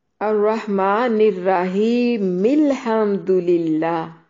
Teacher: میم کو لام کے ساتھ ڈائریکٹ ملا دیا تو حمزۃ الوصل گر گیا · ایک جماعت نے الرحیم کی میم کو الحمد للہ کے لام کے ساتھ ملا کر پڑھا ہے